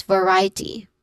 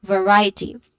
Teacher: The stress syllable is ry. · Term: stressed syllable